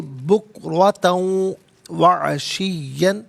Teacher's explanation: بکرتن میں تا پر دو زبر کی ترمین ہے، اسے واو کے ساتھ ملائیں گے، واو کی آواز کو ادا کیا جائے گا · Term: یرملون کا قاعدہ